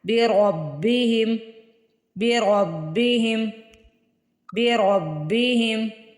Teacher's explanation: را کے اوپر زبر آ رہی ہے، را کو موٹا پڑھنا ہے